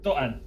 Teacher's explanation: Don't even pronounce the T's. There's only Glottal, Dotton. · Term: glottal stop